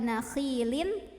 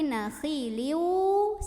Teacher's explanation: Ada idgham bi gunnah karena ada tanwin dhammah bertemu dengan huruf waw, maka cara membacanya tanwin dhammah ini leburkan dengan huruf waw, masuk. Jadi bukan nakhilin tapi nakhiliu sambil ada dengungannya, masuk sambil dengung.